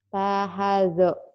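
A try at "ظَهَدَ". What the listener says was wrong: Zahadha. Bukan ta ya. Zahadha.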